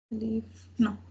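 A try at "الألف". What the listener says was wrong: Oh, okay. Al-alif. I think this al-alif, not alif.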